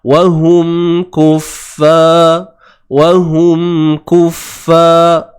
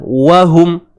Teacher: Tutup bibir dan datangkan sifat dengung asli padanya. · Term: Izhar syafawi